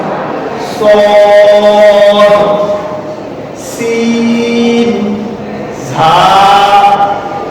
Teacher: এই হরফগুলো জিহ্বা অগ্রভাগ ও সামনের নিচে দুই দাঁতের মাথা, এই যে দুই দাঁতের মাথা এবং উপরে দাঁতের সামান্য অংশ মিলে উচ্চারণটা হালকা ভাবে